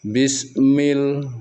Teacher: mim itu juga dari bibir tapi bagian dalam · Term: makhraj huruf